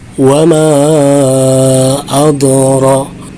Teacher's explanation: Ya, jadi ro-nya dibaca tebal